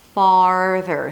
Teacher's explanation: Notice that my lips are a little more rounded for the ah sound. Definitely for the R.